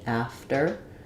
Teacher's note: it's pretty much unaspirated because it comes after the F, after. So you can think about it like a really light little D sound or just a light T, after.